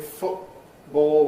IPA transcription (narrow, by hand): ˈfʊʔbɔːo